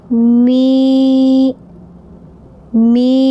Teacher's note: Selanjutnya mim kasrah ya sukun dibaca mi mi memanjangkan dua harakat.